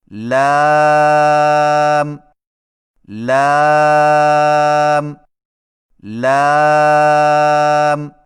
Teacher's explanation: لام کی ادائیگی میں زبان کے باریک کنارے کو اوپر والے دانتوں کے مسوڑوں سے لگا کر باریک آواز میں پڑھیں، یعنی لام لام لام۔